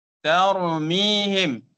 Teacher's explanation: ro dia tebal tapi ta nipis